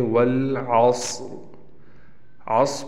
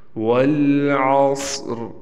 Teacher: آخر میں ہلکی سی را ساکن ظاہر ہونی چاہیے۔ والعصر، میں تھوڑا سا واضح کرنے کے لیے زیادہ لمبی را پڑھ رہا ہوں، جبکہ تھوڑی سی را پڑھنی ہے۔